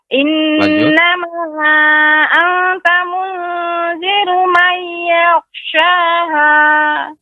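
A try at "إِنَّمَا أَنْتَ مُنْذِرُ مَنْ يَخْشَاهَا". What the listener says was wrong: Ya, anta jangan terlalu cepat Ibu pengucapannya. Innama anta munziru man yakhshaha.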